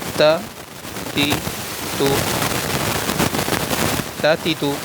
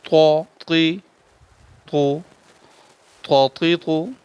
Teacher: تا کو سیدھے منہ سے پڑھنا ہے، طا کو گول منہ سے پڑھنا ہے۔ یہ موٹے حروف میں سے ہے۔